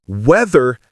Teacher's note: Weather has that voiced th sound. Your vocal cords are buzzing.